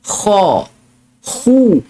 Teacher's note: Huruf kha ni bila kita sebut baris atas dengan baris depan. Kha. Hu. Tebal dia.